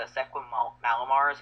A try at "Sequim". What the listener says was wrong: It's Squim Squim. It basically pronounced it without the e. Yeah, Squim.